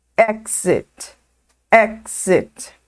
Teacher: Exit começa com o som da letra E, exit. E aqui o I, ele tem um som no meio do caminho entre o E e o I